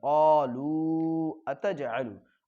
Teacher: واو حروف مد کے بعد حمزہ دوسرے کلمے میں ہے تو مد منفصل ہوگا تو لو کو کھینچیں گے